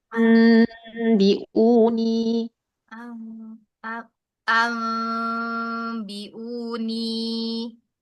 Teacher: nun sukun ketemu ba, iqlab, furjah sedikit. Jangan jangan idgham, jangan tapi furjah berarti.